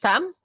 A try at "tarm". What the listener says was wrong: Tarm. We pronounce the R, po. Tarm.